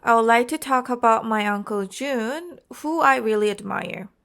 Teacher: Here, the intonation is a natural rise and fall, rising slightly on like, and slight emphasis on June since it's a name, and strongest emphasis on really admire